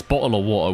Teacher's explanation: it's bottle of water with a glottal stop